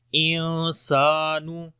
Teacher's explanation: نون ساکن کے بعد سین آ گیا، حروف اخفا میں سے ہے، اخفا کریں گے جو کہ لائٹ اخفا ہوگا، سین کو لمبا کریں گے، الف مدہ ہے۔